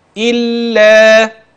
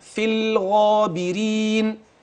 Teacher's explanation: وفي أحوالها حتى الآن كلها مرققة ما غلظتهاش، لم أفخم اللام.